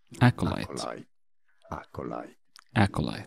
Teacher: stress on that first syllable